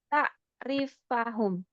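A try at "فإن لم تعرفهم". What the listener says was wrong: Fa'in lam ta'rifhum. Fa-nya disukun ya.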